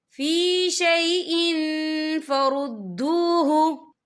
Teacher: तनवीन की आवाज को नाक में छुपाएंगे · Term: इक्फा